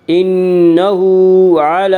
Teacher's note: انہ ہا کے اوپر الٹا پیش ہے، الٹا پیش قائم مقام ہے واو مدہ کے، اس لیے الٹا پیش کو 1 الف کے برابر کھینچ کر پڑھیں گے۔ انہ علی، لام کے اوپر کھڑا زبر ہے، کھڑا زبر کو 1 الف کے برابر کھینچ کر پڑھیں گے